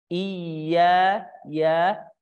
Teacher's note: ya-nya dibuka mulut kita, terbukanya aulah tengah lidah, nama sifatul hurufnya infitah